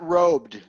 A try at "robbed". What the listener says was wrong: Robed is R-O-B-E-D. That means you're wearing a robe. Robbed. It's robbed. Almost an ah sound. Robbed.